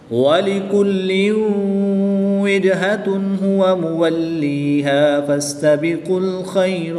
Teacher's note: جیم حروف کلکلہ میں سے ہے اور جب حروف کلکلہ ساکن ہو تو ان میں کلکلہ خوب ظاہر ہوگا، ان میں کلکلہ کریں گے۔